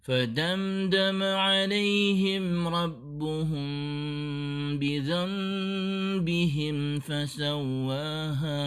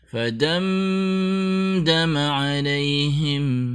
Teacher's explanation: فَدَمْدَمَ عَلَيْهِمْ رَبُّهُمْ بِذَنبِهِمْ فَسَوَّاهَا. Tentunya kita tidak boleh menahan bunyi M di kata fadamdama yang berhukum izhar syafawi